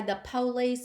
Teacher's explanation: stress the first syllable of words police and Detroit